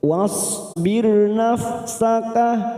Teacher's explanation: ra sukun yang didahului kasroh. Kita baca tarkik tipis